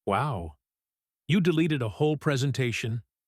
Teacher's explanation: starts to relax. You can hear it in his voice. His pitch drops slightly.